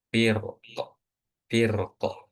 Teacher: Tebal tafkhim ketika diwakafkan dengan sukun